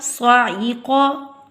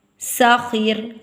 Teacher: اسی طرح صاعقہ، ساخر، صاد کی آواز سین میں نہیں آنی چاہیے۔ صاد کو ہمیشہ موٹا پڑھا جائے گا اور سین کو ہمیشہ بریک ادا کیا جائے گا۔ ان دونوں میں فرق محسوس ہونا چاہیے۔